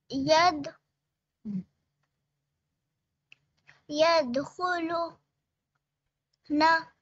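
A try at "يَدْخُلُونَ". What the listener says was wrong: जी, और यहाँ पे, जी यहाँ पे वाव मदा करना है, बाकी अच्छा पड़ा है। नहीं नहीं नहीं वाव मदा लाम दम्मा वाव सुकून लू यहाँ पे होगा ना। यदखुलूना।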